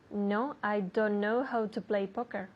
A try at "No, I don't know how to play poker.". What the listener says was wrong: Okay, now you're not saying the T at the end.